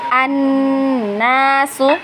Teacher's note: Ingat huruf nun bertasydid, berarti dia dibacanya gunnah ya, wajib gunnah. Dan gunnahnya ditahan 2 harokat ya.